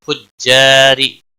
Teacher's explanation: را زیر کی وجہ سے باریک پڑھا جائے گا